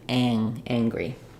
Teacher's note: a g sound in there it's just the NG sound but in angry or anger um I have the NG sound and a g sound